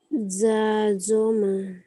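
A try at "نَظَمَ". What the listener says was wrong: Faqada. Na. Bukan za. Na.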